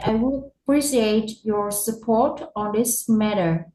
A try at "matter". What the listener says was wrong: You say it like it's meter. Okay, it's matter. But good job.